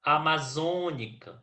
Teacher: na palavra amazônica nós temos a antepenúltima sílaba tônica